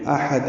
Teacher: حمزہ بالجہر ادا ہوتا ہے، ہا وسط حلق سے نرمی سے ادا ہوتا ہے